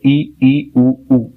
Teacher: तो सबसे पहले अगर हम संवृत सर की बात करें संवृत स्वर तो जिसके उच्चारण में बहुत कम मुंह खुलता है। बड़े आसानी से हम बोल देते हैं ज्यादा मुंह खोलने की आवश्यकता नहीं होती है।